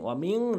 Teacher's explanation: মিন না বলে ওয়ামিং ইকফা করবেন, ওয়ামিং নাকের ভিতরে নেবেন